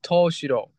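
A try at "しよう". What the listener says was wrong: You're getting shiro confused with shiyo. Shiyo. With a long o. Shiyo.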